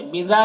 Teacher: موم یہاں پر میم ساکن کے بعد با ہے تو میم کی تنوین کو میم سے بدل کر غنہ اور اخفاء کے ساتھ میں پڑھیں گے، اس کو اقلاب کہتے ہیں۔ بذا میں الف مدہ ہے، اسے ایک الف کے برابر کھینچیں گے